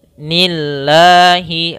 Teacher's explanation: lafal Allah ketika dia huruf kasrah maka tipis, tidak nillahi, tidak dibaca nillahi tapi nillahi.